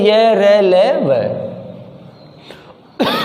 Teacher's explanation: कंठ के अंतः भाग से बोले जाते हैं और इनको स्वर एवं व्यंजन के मध्य की स्थिति का माना जाता है, इसलिए इनको अंतस्थ कहा जाता है।